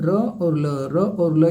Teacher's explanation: र और ल ये दंत मूल है आपका